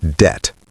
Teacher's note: The B is completely silent. Always pronounce it debt.